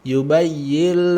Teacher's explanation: tasdidkan huruf iya-nya, tengah lidah naik.